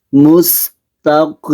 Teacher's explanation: قاف کو پور پڑھنا ہے، مستقیم، تا کو باریک پڑھنا ہے